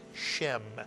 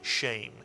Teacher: You'll very often hear this word read as shem rather than shame.